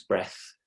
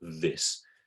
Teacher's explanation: the unvoiced is breath and the voice is this